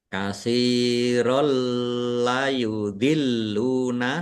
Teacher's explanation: Fathah tanwin bertemu dengan huruf lam. Idgham bila ghunah. Masuk dengan tidak mendengung. Langsung masuk ke huruf lam ditandai lam yang ada tasdidnya tetapi tidak mendengung. · Lamnya ada tasdidnya dibaca dobel dan ditekan biar tampak dobelnya.